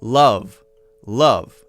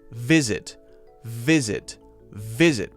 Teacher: it's got to be a strong vibration of air coming through your teeth vibrating the bottom lip and a little bit of wind as well we want some air flowing through so that it makes that